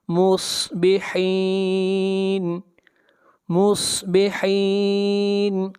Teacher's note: صاد کو موٹا پڑھیں گے، صاد حروف مستعلیہ میں سے ہے، اور یہاں پر مد عارض وقفی کریں گے۔